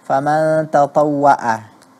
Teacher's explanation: yang kita dengar huruf ain berganti menjadi hamzah